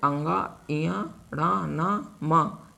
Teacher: यह नासिक व्यंजन है इनका उच्चारण स्थान नाक के द्वारा होता है